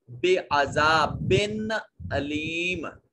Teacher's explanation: یہاں با کے نیچے دو زیر ہونے کی وجہ سے جو نون کا آواز پیدا ہوگا اس نون کو ظاہر کر کے پڑھیں گے، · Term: حرف اظہار